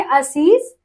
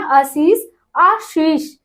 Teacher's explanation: जो दंत सा है वही कन्वर्ट हो जाता है तालव्य सा में